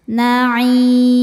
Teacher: Maka huruf ain ini jika berhenti panjangnya boleh 2, boleh 4 atau 6 harokat asal konsisten dalam sekali baca. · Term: mad arid li sukun